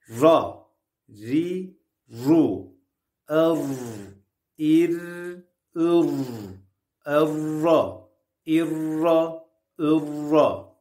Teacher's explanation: R harfi dilin ucunun üst damağa doğru kaldırılmasıyla çıkar. Yerine göre ince, yerine göre kalın bir harftir.